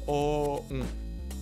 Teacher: On commence par la voyelle, puis on l'envoie dans le nez. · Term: nasales